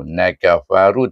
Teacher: kita mesti membaca dengan dua harakat pada kalimah ru